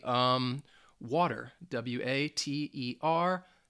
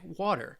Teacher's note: when the T sound is in the middle of a two-syllable word, they would call it the flap T. And that flap T sound is more like a D sound.